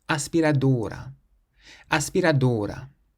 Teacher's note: We stress the O in this word because it's the syllable before last, seeing as this word ends in a vowel.